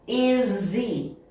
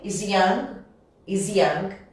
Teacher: Tirei o H, sobrou o I. Junta. Is he. Aqui vai sair um som de Z também.